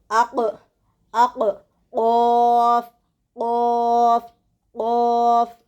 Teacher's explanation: اس کا مخرج زبان کی جڑ کو اوپر کے تالو کے ساتھ لگانے سے نکلتا ہے